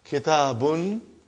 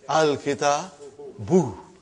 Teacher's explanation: Now you see, as soon as I put al, like a magic, one vowel sign got dropped. Instead of bun, it became bu. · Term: tanween